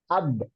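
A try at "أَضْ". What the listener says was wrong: এই যে ছুটে যায় আদা, এই ছুটে যাওয়া যাবে না, আদ।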